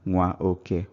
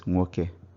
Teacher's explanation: o forces a to disappear completely from the spoken Igbo here. So instead of hearing nwa oke, what we hear is nwoke.